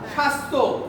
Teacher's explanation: মানে শব্দের শুরুতে বফলা আসলে উচ্চারিত হবে না, কিন্তু যদি মাঝে বা শেষে আসে উচ্চারিত হবে।